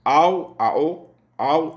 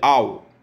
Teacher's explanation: Il faut éviter de la prononcer comme de voyelles A plus O. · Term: diphtongue